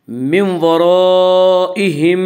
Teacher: من ورائہم میں ادغام بالغنہ ہوگا۔ اس کا قاعدہ یہ ہے کہ نون ساکن یا تنوین کے بعد اگر حروف یرملون میں سے کوئی حرف آئے تو ادغام ہوگا۔